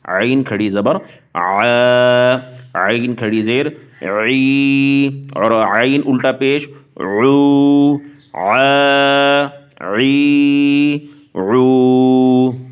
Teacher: وہ عین کھڑی زبر آ نہ کرے، یعنی آواز حمزہ کی نہ دے۔ عین کا نام اگر صحیح لیا ہے تو اس کی ادائیگی زبر زیر کھڑی زیر اور الٹا پیش کے بعد وہ عین کی آواز کی ادائیگی ہی کرے۔